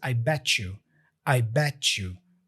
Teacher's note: we join the T and the Y with this ch sound